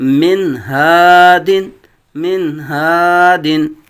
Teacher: نون ساکن میں غنہ نہیں کریں گے بلکہ نون ساکن کو واضح کریں گے